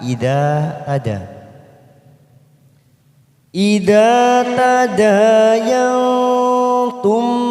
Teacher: kita samarkan bunyi nun sukun tiga ketuk